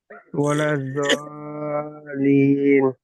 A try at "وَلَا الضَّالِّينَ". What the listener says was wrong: জলিন। না, লামটা দুবার উচ্চারণ হচ্ছে না।